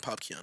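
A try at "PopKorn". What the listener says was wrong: Popcorn, let me tell you. No, not Keon. It's not. No. Drake is not official. It's Popcorn.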